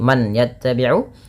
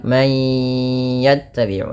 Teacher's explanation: Mayya idgham bi gunnah, masukkan bunyi suara nun kepada huruf ya, bukan lagi man yattabi'u tapi menjadi man yattabi'u, sembari ditahan 2 harakat. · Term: bununah